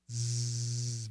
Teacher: vibrated sound like an s but we gotta vibrate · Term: long z